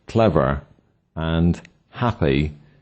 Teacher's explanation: A content word with two syllables always has one of these syllables stressed and the other unstressed. An example is the word clever and happy, which have the first syllable stressed.